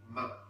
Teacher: And ma sound is, air will be blocked by the lips, but at the same time air will be released by nose. That's it became nasal, ma.